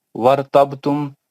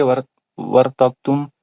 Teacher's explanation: बा पे कलकला सुगरा करेंगे